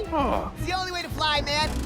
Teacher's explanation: here notice that the preposition 2 gets reduced to other sound the vowel o sounds like a schwa and then the t is pronounced as a flappy so it's